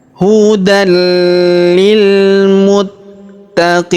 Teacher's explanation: tanwin an-nya, huruf dan-nya melebur masuk ke huruf li, la ataupun li yang berharokat tasydid ya, tanpa dengung ya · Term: idgham bila gunnah